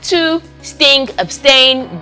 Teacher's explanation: it's a plosive you know it comes out with a stop made with the tip of the tongue on the alveolar ridge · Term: voiceless alveolar stop